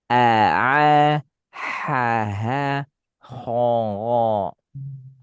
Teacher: Kalau urutan makhraj hamzah ha ini tenggorokan bawah. Ain ha tenggorokan tengah. Gin ko tenggorokan atas.